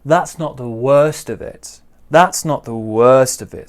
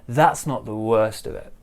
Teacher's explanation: big stress on worst smaller stress on that